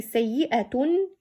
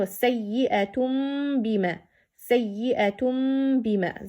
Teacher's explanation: So instead of say sayyi'atun, you have to say sayyi'atum. It means in place of nun you have to read mim and stretch this meme for 2 haraka. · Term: iqlab